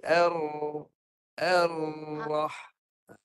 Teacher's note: hujung belakang lidah, pangkal lidah tinggikan. Sebab ni ra tebal. Pangkal lidah tinggi.